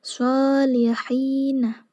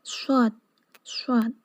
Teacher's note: tajamnya suara karena ia keluar dari celah yang sempit antara ujung lidah dengan dua gigi seri atas bawah